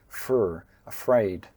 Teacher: don't drop the R, make sure that you pronounce that together with the F. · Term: FR sound